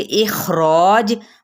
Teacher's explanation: اخراج، مد اصلی بالالف، اور جیم پہ جب وقف کریں گے تو کلکلا کریں گے